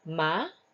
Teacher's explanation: the next one is yes a rising tone so again the word ma but the tone is rising